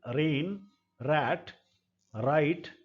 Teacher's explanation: जीभ यूं मुड़ करके और यहां पर टच होती है हार्ड पैलेट के साथ रेट्रोफ्लेक्स में। Tip of the tongue is curled back in such a way that only इट्स underside articulates